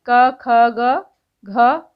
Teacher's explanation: क ख ग घ यह कंठ से बोले जाते हैं